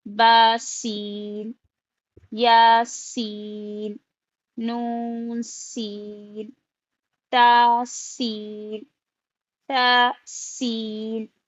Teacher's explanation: یعنی کہ سین میں سیٹی کی آواز ہوتی ہے،